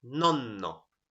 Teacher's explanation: So notice length not in the vowel but in the consonant in this case.